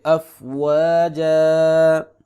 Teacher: دو زبر پر جب ہم وقف کرتے ہیں دو زبر والے حرف پہ تو اس پر ایک زبر اور بعد میں الف پڑھا جائے گا